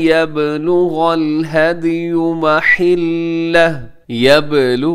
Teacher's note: यबलु बा कलकला होगा यहाँ पर, हदियु में दाल वो भी कलकला है